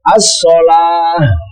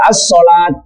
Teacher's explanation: tak marbuto itu kalau berhenti dibaca ha